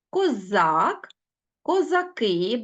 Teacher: бачимо що в множині наголос перемістився на останній склад